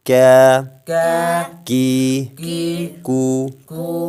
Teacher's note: زبان کی جڑ تالو کے سخت حصے سے